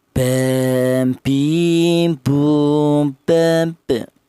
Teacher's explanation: Huruf ba ini keluarnya huruf berasal dari kedua bibir yang rapat